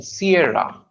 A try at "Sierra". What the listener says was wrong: Sierra. रा. रा की आवाज पूरी क्लियर आनी चाहिए. ए नहीं आएगा. Sierra. रा छोटा आएगा लेकिन क्लियर आएगा.